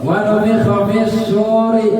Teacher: alif lam samsiah, lamnya enggak kebaca, ya, lamnya enggak kebaca